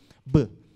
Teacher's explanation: Mesela ben bilabial bir ses üreteceğim. Dudaklarda engelleme yapacağım. B. Havanın durumu ne burada? Patlıyor.